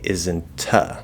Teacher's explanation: you can actually do the T and say isn't uh, right? Actually release that T. Which here it wouldn't be a strong T, it would be a weak T, but there is a T sound, yes. · Actually release that T. Which here it wouldn't be a strong T, it would be a weak T, but there is a T sound, yes. That's another way to do it.